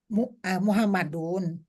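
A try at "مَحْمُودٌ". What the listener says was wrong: Ada wawunya. Tadi udah bener yang pertama.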